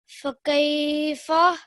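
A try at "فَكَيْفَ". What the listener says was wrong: फा क्यों लंबा किया?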